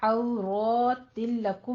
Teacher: औ वाउलीन अदा करेंगे, होंठों को नातमाम गोल करते हुए, और रॉ को आपने पुर पढ़ना है, फतह कायमा औरतिन नहीं है, औरतिन है।